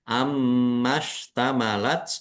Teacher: mim tasdid dibaca ghunah atau mendengung ditahan Biar tampak mendengung